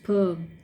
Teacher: two sounds per and per is actually a voiceless sound so when you are pronouncing the per sound you don't get any friction or vibration